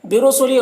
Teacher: را کو پر پڑھیں گے، لی میں یا مدہ ہے، اسے ایک الف کے برابر کھینچیں گے